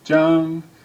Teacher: The third most common last name is Jang said with a high first tone